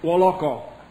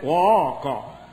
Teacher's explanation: They put a vowel on the end. Lingala has a vowel on every word. It makes very musical.